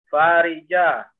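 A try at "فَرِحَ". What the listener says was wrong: Bukan faroja. Fariha. Ha.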